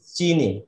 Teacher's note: these two vowels harmonizes each other in high front unrounded vowel